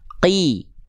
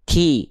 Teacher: Qaf nggak boleh keluar percikan-percikan nafas.